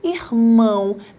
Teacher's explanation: Então, o O tem som de U. Neste caso, você tem A, O com som de U, formando então um encontro vocálico. · O O com som mais brando, que é o som do U, é a tua semivogal.